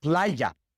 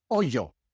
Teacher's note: in most places, it's pronounced like a very faint J sound.